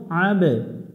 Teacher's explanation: কলকলা হবে, এখানে প্রতিধ্বনি সৃষ্টি করব। আইন অক্ষর একটু গলা চেপে উচ্চারণ করব।